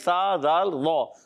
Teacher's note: زال کے ادائیگی زبان کا سرا اوپر کے دانتوں کے اندرونی کنارے سے ادا ہوگا.